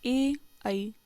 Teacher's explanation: ए आई का उच्चारण स्थान कंठ और तालु दोनों है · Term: कंठ तालु